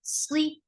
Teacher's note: Ila, sli, sod is heavy. And the kasra is e sound. The sound is short, but it is heavy.